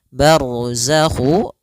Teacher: ro tebal karena ada huruf ro yang sukun didahului dengan fathah